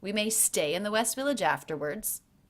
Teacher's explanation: West and village were both stressed, as was afterwards, but they had less curve to the voice. They were less stressed to me than the word stay, which was louder.